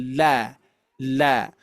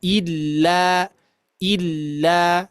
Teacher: Jadi pinggir lidah atau sisi lidah, ya. Sisi lidah itu menempel ke gusi gigi seri atas gitu ya. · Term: huruf lam